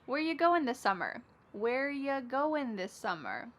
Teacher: Where ya, which is you, goin', dropping the G